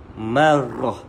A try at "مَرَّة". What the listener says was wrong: مرة bukan marah tu rin ha. Marah tu rin ni marah. Ada getaran sikit pada lidah r.